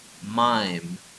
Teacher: the bilabial nasal is found in the english mime